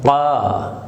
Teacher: حلق میں تھوڑی سی رکاوٹ کے ساتھ